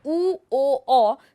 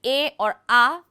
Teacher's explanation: स्वरों की गोलाई के आधार पर वर्गीकृत करने के लिए होठों के वर्तुलन को भी उपयोग किया जाता है। जैसे उ, ओ, औ स्पष्ट रूप से गोल स्वर है जबकि ए और आ गोल नहीं है